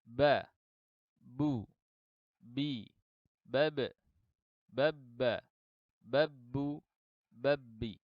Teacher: huruf ba dan mim keluar di antara dua bibir yang tertutup.